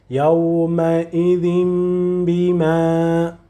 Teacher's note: We change the sound of noon if it is a pure noon, a consonant noon, or if it is hidden in the tanween, we change its sound to the letter mim. And when we pronounce mim, we make ghunna and we hold it a little bit